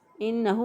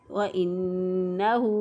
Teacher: وَإِنَّهُ، اسی طرح ہاں الٹا پیش کو ایک الف کے برابر لمبا کریں گے۔ اب بعض لوگ جو ہے اس کو لمبا نہیں کرتے اور نہ ہی گنہ کرتے ہیں، اس کو پڑھتے ہیں انہو، انہو پڑھ دیتے ہیں تو غلط ہو جائے گا۔